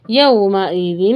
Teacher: وجوہ ہوئی، یو واو کو ظاہر کریں گے، یومئذ نہیں پڑھیں گے، یومئذ۔ حمزہ کے نیچے زیر ہے تو اس کو آواز کو ای والا ساؤنڈ کمپلسری رکھیں۔ یومئذ نہیں پڑھیں گے، ای والا ساؤنڈ واضح رکھیں۔